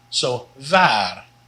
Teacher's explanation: The W is just like the V, like in wat, but the double A here is long